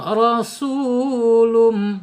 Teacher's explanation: ro ya dibaca tafhim tebal ya ro secara makhraj harus dibaca tahim ro gitu ya.